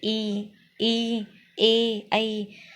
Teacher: अग्रभाग जीभ का अगला हिस्सा सक्रिय रहता है, जैसे ई, ए, ऐ।